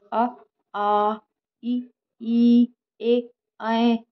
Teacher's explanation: जब आप बोलोगे तो आपके जो ओठ है वो गोल नहीं होंगे